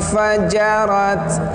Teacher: nun mati bertemu fa, bunyinya samar antara dengung dan izhar